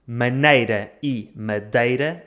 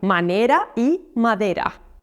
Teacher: Agora quero falar sobre dois ditongos espanhóis que normalmente correspondem a uma só vogal portuguesa e dois ditongos portugueses que normalmente correspondem a uma só vogal espanhola